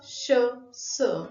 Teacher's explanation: मुखविवरामध्ये हवा पूर्णपणे अडवली जात नाही, तर जिभेच्या दोन्ही बाजूंनी जी अरुंद फट असते तिच्यातून ती सतत बाहेर पडते, त्यावेळी जे उच्चारण होतं त्याला घर्षक असं म्हणतात.